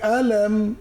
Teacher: আলাম মিম সাকিন গুন্না হবে না